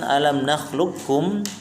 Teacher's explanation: dibaca dengan idgham kamil, artinya semua sifat huruf qaf diidghamkan kepada huruf kaf tanpa sisa